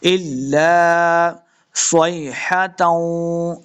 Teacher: स्वाद को मोटा पढ़ेंगे, लम्बा बिल्कुल नहीं करना।